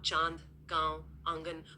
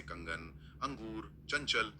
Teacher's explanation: यहां ध्वनि एकदम तेज और स्पष्ट रूप से नाक से आती है। तो चंद्रबिंदु एक फैली हुई गूंजती हुई ध्वनि है। और बिंदु एक तीखी नासिक्य ध्वनि। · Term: अनुनासिक